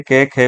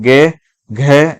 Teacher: के और खे को बोलते हैं तो आपको बोलने में इतनी कंपन महसूस नहीं होता, लेकिन गे और घे को जब बोलेंगे तो आपको कंपन या वाइब्रेशन ज्यादा देखने को मिलेगा। जैसे आप बोल के देख लीजिए, के खे बोलेंगे तो कोई फर्क ज्यादा पड़ता नहीं है, कंपन ज्यादा आपको महसूस नहीं होता।